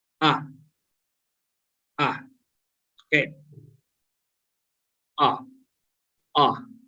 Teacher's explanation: this is as open vowel. The reason is it's like cardinal vowel number 5. Yes. And the lips is in neutral.